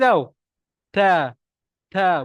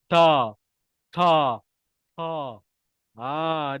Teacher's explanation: makhrajnya makhrajnya adalah hujung lidah di antara gusi dan gigi atas maknanya kita kena sebut ta lidah tu Mesti kena gigi tah ta ta bukannya ta ta dia ada slangsang british sikit